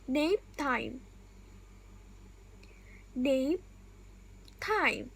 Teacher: My lips came together for the P, but they didn't release the air. I stopped the air with my lips, then release with the next word.